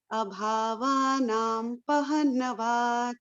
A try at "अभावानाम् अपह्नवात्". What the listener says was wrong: म लगाना है बीच में म लगाना है। अभावानाम अपहनवात